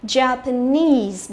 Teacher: trọng âm của nó cũng rơi vào cái âm tiết nese này